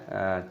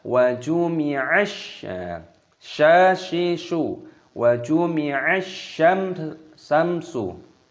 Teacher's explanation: Di sini huruf sin, ini tasdid, maka dimasukkan, diidghamkan, dibaca wa jumi'ash syashishu wa jumi'ash syamsu. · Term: alif lam samsiyah